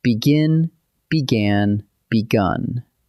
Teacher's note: Hear it? An I, then an ah, then a oo.